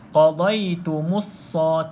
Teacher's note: terus masuk dalam huruf sad. Kita tak sebut lam. Itu maksudnya tidak perlu lafaz. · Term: lam yang kosong